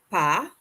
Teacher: Notice again, we're not pronouncing that final consonant, that S.